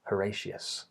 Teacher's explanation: that has the schwa for the O spelling